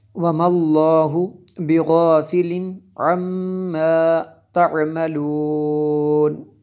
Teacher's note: تنوین کے بعد عین حروف حلقی میں سے ہے اس لیے غنہ نہیں ہوگا، آگے میم شدد ہے یہاں پہ غنہ کریں گے۔